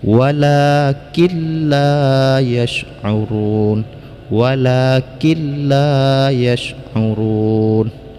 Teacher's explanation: Idgham, maksud idgham adalah dimasukkan suara nun ke dalam lam, ataupun nun ini dileburkan ke dalam lam sehingga nun ini tidak terbaca lagi. Walakilla, jadi langsung kaf bertasydid pada lam, nun ini tidak dibacakan lagi, akan tetapi dengan tanpa dengung, jangan sampai didengungkan ya.